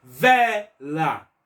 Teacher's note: O vé foi a sílaba mais alta. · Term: paroxítona